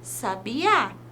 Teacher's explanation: sílaba mais forte em uma palavra por exemplo a palavra sabiá percebam que o a é mais forte na palavra Sabiá · Percebam que o A é mais forte na palavra sabiá, quando queremos dizer o nome do pássaro.